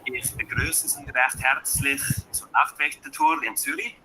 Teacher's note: see that rolling of that R. Das ist typisch für Schweizerdeutsch.